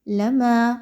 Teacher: لما 2 حرکات کے برابر ما کی ادائیگی کی جائے گی